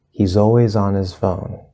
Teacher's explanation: always with on we have the fifth vowel sound ah and the z from always connects always on